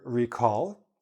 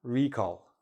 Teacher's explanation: Not the verb recall, noun, recall, where the stress is on the first part